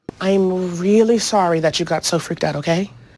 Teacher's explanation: the actress really elongates the R. So there is a long moment of a U shape.